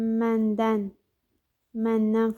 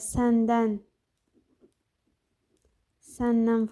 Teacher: n, m samitindən sonra dan-dən, nan-nən kimi tələffüz oluna bilir.